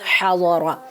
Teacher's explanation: را کو زبر کے ساتھ پر پڑھیں گے. حاضارا موٹی آواز کے ساتھ حاضارا.